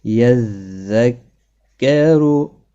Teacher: یذکرو را پر پڑھا جائے گا پیش کی وجہ سے